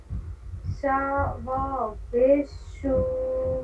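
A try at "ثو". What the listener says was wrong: شا نہیں، سا. سا.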